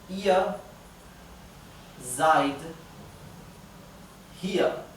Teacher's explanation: Lo pronuncio un poco exagerado a propósito para que sepan que va una R. Pero las R's finales en alemán se pronuncian de una forma casi imperceptible. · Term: R final